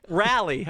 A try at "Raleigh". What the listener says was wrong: It sounds like you're saying like a pep rally. It's Raleigh.